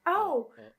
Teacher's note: You push your lips forward a lot more than the Japanese.